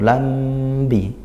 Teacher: disebut syafawi karena makhrajnya huruf mim dan ba itu di dua bibir gitu ya, dirapatkan bibirnya. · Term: Ikhfa syafawi